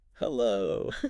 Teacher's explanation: Your voice even goes up a little bit at the end.